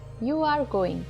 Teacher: If you say this with a flat tone, it is a confirmation that you are going somewhere.